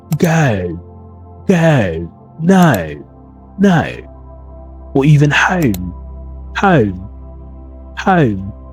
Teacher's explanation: an O sound, which is a rounded lip. And this sound is very strong at the same time, so you need to master it if you want to nail a British accent.